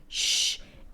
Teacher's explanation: By the way, the difference between a sh and a ch is that the shh sound is a fricative. So the sound is continuous